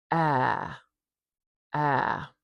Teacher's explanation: This is a very low front vowel, ah, meaning our tongue is quite forward in our mouth and our jaw is quite low. Or you can think of it this way, our mouth is quite open.